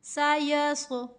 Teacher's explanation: یا کو صاد کے ساتھ ملاتے ہوئے یہاں پہ ہمیں سیٹی کی آواز کو نہیں لے کر آنا، کیونکہ سیٹی کی آواز سین میں ہوتی ہے، صاد میں نہیں ہوتی۔ سایس، یس، یس نہیں پڑھنا، یس میں یہاں پر ہم سین لگا دیں گے، غلط ہو جائے گا۔